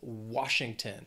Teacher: Three syllables, stress is on that first syllable